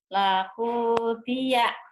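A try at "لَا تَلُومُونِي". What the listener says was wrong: bukan, bukan. Tak ada yang panjang, tak ada yang panjang, tak ada yang panjang. Lakudia, lakudia.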